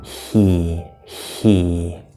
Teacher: Okay, so it's like a voiceless E. So we're basically doing a voiceless E and then a voiced E.